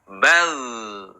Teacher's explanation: ketika sukun maka terdengar ada suara yang mengalir